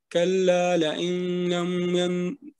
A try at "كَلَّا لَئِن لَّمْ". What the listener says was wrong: آپ کا اس میں غنہ ہو رہا ہے. یہ جو آپ ادغام کر رہے ہیں نا یہ ما گنہ کر رہے ہیں, اس کو بلا گنہ کرنا ہے نا کیونکہ آگے لام ہے.